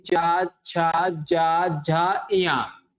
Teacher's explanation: तो आपकी जीभ जो है, ठीक है ना, आपकी जीभ जो है ऊपर वाले हिस्से के तालू में टच होती